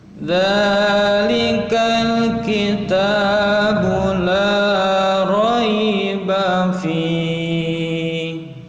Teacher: Dzalikal, ini fathah bertemu dengan alif lam yang disukun, maka alif lamnya disebut alif lam qamariyah atau dibaca jelas, terlihat bacaan alif dan lamnya